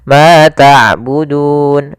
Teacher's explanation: Maka panjangnya du di sini boleh dua harakat, boleh empat harakat, boleh enam harakat. Boleh ma'budun dua harakat ma'abudun. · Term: mad arid